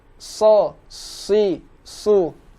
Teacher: Huruf shad. Nah, huruf shad kita ingat pada pembahasan sebelumnya adalah huruf yang selalu keluar di rahang tebal. Maka dijaga apabila huruf shad berharokat kasroh.